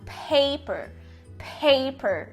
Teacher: você pode colocar também um agazinho pequeno depois do primeiro P para dizer que ele é aspirated que ele é aspirado